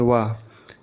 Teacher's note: वा का उच्चारण करते समय ऊपर के दांत निचले होंठ को स्पर्श करते हैं, इसलिए इसे दंतोष्टय या दांत प्लस होंठ ध्वनि कहा जाता है।